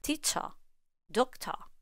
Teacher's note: to put a lot of stress on the stress syllables and relax our mouth on the non-stressed ones and that is when the schwa sound comes in handy